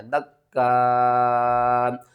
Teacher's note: اور وقف کی صورت میں حمزہ کو جب ساکن کریں گے تو جھٹکے کے ساتھ پڑھیں گے دکا، مد متصل ہے کیونکہ حمزہ جو ہے اسی کلمے میں ہے اور اس کو آپ نے 5 الف کے برابر کھینچ کر پڑھنا ہے